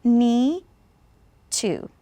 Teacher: D and T are very similar, so we'll just pronounce it one time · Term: linking